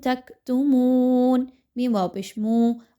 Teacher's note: واو مدہ ہے، 1 سے 2 حرکات کے برابر اس کی ادائیگی رکھیے